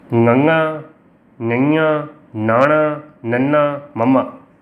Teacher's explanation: ਪੰਜਾਬੀ ਵਰਨਮਾਲਾ ਦੇ ਵਿੱਚ ਤੁਸੀਂ ਜਦੋਂ ਤੁਰਦੇ ਹੋ ਤਾਂ ਕੁਝ ਅੱਖਰ ਇਹੋ ਜਿਹੇ ਨੇ, ਕੁਝ ਧੁਨੀਆਂ ਇਹੋ ਜਿਹੀਆਂ ਨੇ ਜਿਨ੍ਹਾਂ ਦੀ ਆਵਾਜ਼ ਨੱਕ ਥਾਣੀ ਆਉਂਦੀ ਆ। ਉਹਨਾਂ ਨੂੰ ਕਹਿੰਦੇ ਆ ਨਾਸਕੀ ਧੁਨੀਆਂ।